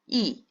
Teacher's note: 입을 옆으로 짝 찢을 뿐이지 방해를 받고 나오는 소리는 아니죠